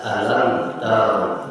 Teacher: Tetapi karena sebelumnya ada lam, tadinya dibaca panjang menjadi dibaca pendek, alam taro. Mim bertemu huruf ta, izhar syafawi, dibaca jelas